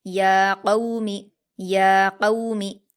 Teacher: या कौमी, या पर खड़ा ज़बर है, इसको हम अलिफ मद्दा की तरह 2 हरकत खींचेंगे। क़ाफ पर वाउलीन है, इसको हम मारूफ आवाज़ के साथ जल्दी पढ़ेंगे और क़ाफ को पुर पढ़ेंगे। मीम पर हरकत है, इसको जल्दी पढ़ेंगे।